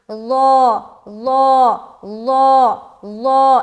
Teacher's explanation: یہ حرف ظا حروف مستعلیہ میں سے ایک ہے، لہٰذا اسے موٹا کرنے کا حکم ہے، یعنی کہ ہم اس کو موٹا کر کے پڑھیں، موٹا کر کے ملائیں، موٹا کر کے ادا کریں۔